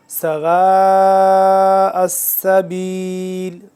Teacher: واو الف مد زبر وا 4 سے 5 الف کے برابر اس کو ہم نے لمبا کرنا ہے